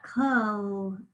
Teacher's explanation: it's our schwa at the first syllable spelled with an o